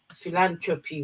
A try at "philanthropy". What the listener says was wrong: not a T in the middle. Well, there is a T in the middle, but it's not pronounced. There's no T in the middle. No T